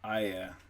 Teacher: So this is kind of a diphthong here. So we're going from I to e. I. You can see that right here.